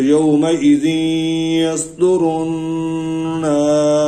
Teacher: مد عارض وقفی 3 الف کے برابر لمبی کی جا سکتی ہے تو وہ میں نے وقف میں کیا.